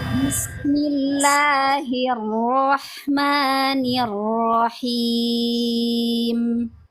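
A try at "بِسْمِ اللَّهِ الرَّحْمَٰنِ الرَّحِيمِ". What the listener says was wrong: Nah, sedikit basmalahnya ya, kita coba koreksi ya, walaupun mungkin tapi nggak apa-apa. Huruf ro-nya itu jangan terlalu itu banget, sehingga nanti bikin susah ngucapin huruf setelahnya. Jadi lebih rileks lagi. Roh, roh. Ya, terus huruf H-nya jangan terlalu ya, nanti dia pokoknya dibikin serasi ya, suaranya, suara hurufnya satu sama lain dibikin serasi, coba.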